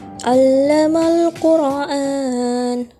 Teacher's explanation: alif lam qamariyah pada al-qur sehingga huruf lam dibaca jelas, mad arli disukun pada an-an sehingga dibaca panjang 2 atau 4 atau 6 harokat dan huruf terakhir menjadi waqaf.